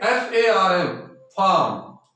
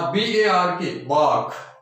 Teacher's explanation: तो ये आर के तुरंत बाद यदि कोई कॉन्सोनेंट आता है तो हमें ध्यान ये रखना है कि आर है वो वहां नहीं बोला जाता है।